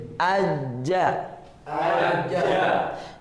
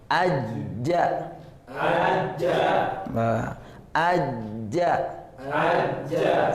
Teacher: tengah lidah bertemu dengan langit-langit atas. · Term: jim